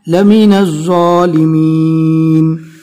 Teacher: ذو کے ادا کرتے وقت ہلکی سی سٹی جیسی آواز آئے گی